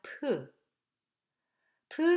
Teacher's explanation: the sound [ph] which is voiceless aspirated sound. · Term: aspirate sound